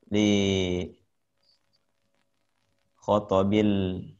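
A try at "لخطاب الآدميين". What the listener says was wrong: khitab, Pak. Khitab bukan khotob, Pak.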